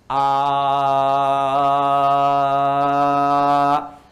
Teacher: kalau huruf hamzah, a dengan h itu satu makhraj, yaitu bagian kerongkongan bagian bawah di sini. Sini nih, sini bagian bawah. · Paling gampang yang Anda mengucapkan a, tidak ada sekat, udara mengalir saja, mengalir.